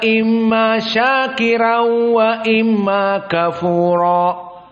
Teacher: Maka di sini syahidnya syakiron, di mana dia idgham jumhur bi gunnah, Dan di sini juga Wars an-Nafi' mengikuti jumhur bi gunnah, walakin ra dibaca muraqqaqah. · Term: tarqiq ar-ra